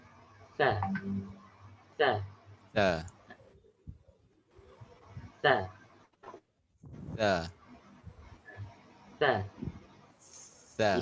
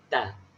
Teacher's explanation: Lidah ni kat depan, kat gigi. Hujung lidah ni keluar sikit.